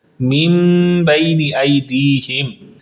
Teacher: جب نون ساکن ہو اس کے بعد حرف با آ جائے تو اس نون ساکن کو میم سے بدل دیتے ہیں، جیسا کہ اس نون ساکن پر آپ چھوٹی سی میم بھی دیکھ رہے ہیں۔ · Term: اقلاب